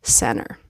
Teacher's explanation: I actually did not pronounce the T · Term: the T disappears